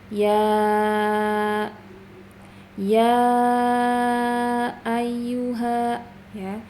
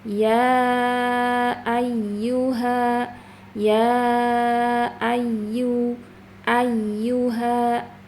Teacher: Jadi harus ada naber. Naber itu suara ditekan agar suaranya itu lebih tinggi dari dibanding suara huruf yang lain. Jadi bacanya ya ayyuha ya ayyu ayyuha.